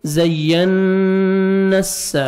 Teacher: نون کو سین کے ساتھ ملائیں گے، سیٹی کی آواز آئے گی